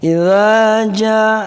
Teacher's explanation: Jangan baca idza kepanjangan sekali. Ya, cukup 2.